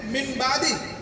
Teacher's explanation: من بعدی. ایک غنہ ناک میں آواز جائے گی اور اخفا نون کو چھپائیں گے. تو ایسے نہیں پڑھیں گے مم نہیں کہیں گے, مم کہیں گے تاکہ نون چھپ جائے اور ناک تک لے جائیں گے تاکہ غنہ ہو جائے.